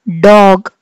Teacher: సో అలా మనం పలికే లెటర్స్ని మనము alveolar అని చెప్పి డిస్క్రైబ్ చేస్తాం. అంటే the tip of the tongue makes contact with the alveolar ridge. The tongue touches the ridge behind the teeth.